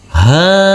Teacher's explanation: Huruf h dibaca panjang dengan panjang 2 harokat karena huruf h yang berfathah a ini bertemu dengan huruf alif yang tidak berharokat.